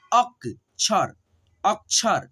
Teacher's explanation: आपको ये जहन में रखना पड़ेगा कि जो छ आएगा ना, छ तरह में के छ, तो छ से पहले हम लोग आधा क पढ़ते हैं